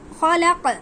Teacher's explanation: خا حروف مستعلیہ یعنی پر حروف میں سے ہمیشہ پر پڑھا جائے گا، ٹھیک ہے، لام نارملی، اور بڑا قاف پر پڑھا جائے گا، ٹھیک ہے، کیونکہ وقف ہو رہا ہے اس لیے قاف پر جزم لگا دیا جائے گا۔